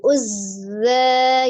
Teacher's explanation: zai tasdid, zai sifatnya roghah jadi dialirkan